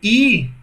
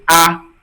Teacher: perceba que a língua ela fica mais alta. É diferente de A. Perceba que a língua é mais baixa. A, agora quando eu digo assim, I, percebe que ela é alta, né?